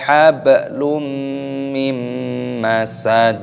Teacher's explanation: hukumnya dibaca Idgham Bighunnah dimasukkan dan disertai berdengung